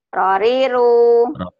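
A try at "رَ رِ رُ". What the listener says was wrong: Jangan dipanjangin. Nah, kebiasaan ibu suka manjangin. Roriru. Roriru.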